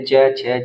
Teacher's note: ये च वर्ग है ये आपका तालू के द्वारा बोला जाएगा